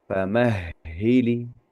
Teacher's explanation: huruf ha itu kalau tasdid itu begitu keluar apa begitu diucapkan itu ternyata berterusan aliran udara itu selama tasdidnya itu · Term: huruf-huruf hams